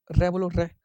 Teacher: जब जीवा नोक वर्तस से कई बार टकराए, रे बोलो रे, जीवा की नोक जो है कई बार टकरा रही है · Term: लुंठित व्यंजन